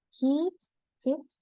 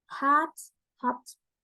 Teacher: For the first two, your mouth will stay fairly closed, but for the last two, your tongue will move lower and cause your mouth to open wider.